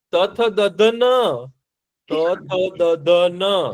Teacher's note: હવે દાંતને અડતા વ્યંજનો છે ને એ દંત્ય વ્યંજન કહેવાય